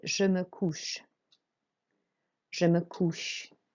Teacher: Okay, so the OU is an OO sound. You really make a round motion with your mouth. You open all your mouth out. It's an OO sound, it's a deep OO.